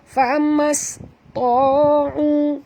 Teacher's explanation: Jangan baca famas, tapi baca famas. Ta, tebal. Kerana ta adalah huruf itba', huruf isti'la juga.